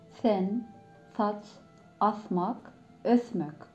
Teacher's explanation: S ve Z harfi Türkmence'de peltek söyleniyor. Yani F, V olarak kelime başında, sonunda, ortasında her yerde S ve Z harfleri peltek çıkar.